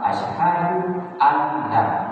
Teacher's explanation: Bunyi nun mati masukkan ke dalam huruf lam sehingga huruf lam tersebut seolah-olah ada tasdid. Sehingga bacaan yang benar pada tasyahud Allah asyhadu an la. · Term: idgham bila ghunnah